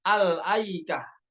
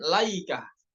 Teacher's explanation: dibacanya dengan Hamzah yaitu Al aikah bukan laikah